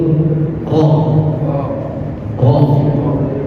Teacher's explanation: Jadi dia ada sifatnya takrir. Takrir itu pengulangan ro. Ro ujung lidah ditempelkan kepada langit-langit atas.